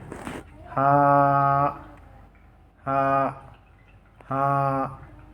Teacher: গলা থেকে হালকা বাতাস বের করে এক আলিফ টেনে উচ্চারিত হবে।